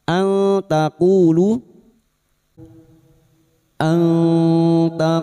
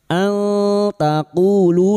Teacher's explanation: nun sukun bertemu ta ikfa hakiki, nun sukun dibaca samar dan mendengung selama 3 harokat